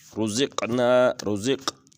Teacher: رزق یہاں پر قاف کے اوپر قلقلہ کریں گے